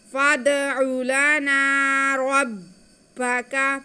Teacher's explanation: یہاں پہ دال ساکن ہے، دال حروف قلقلہ میں سے ہے، یہاں پہ دال کی آواز کو ہم واضح کر کے پڑھیں گے، یعنی کہ قلقلہ کرتے ہوئے پڑھیں گے